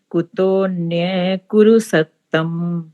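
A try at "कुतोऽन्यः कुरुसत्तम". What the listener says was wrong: हमने कुतो अन्य नहीं बोलना, इस एस को साइलेंट रखा जाता है। कुतोन्य, ओ के साथ ही न की आवाज आनी चाहिए। कुतोन्य, हाँ जी, कुतोन्य।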